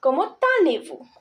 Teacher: The last consonant of the first word and the first vowel of the next word are best friends. So they join together and they form liaison.